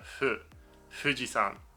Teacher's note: in japanese it's it's a softer sound it's more of a it's like you make an f but then let the air go before you've closed it off